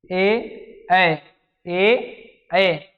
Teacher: कंठ और ताल दोनों से बोलना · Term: कंठ ताल